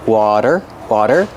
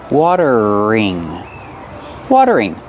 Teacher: The T is a fast D.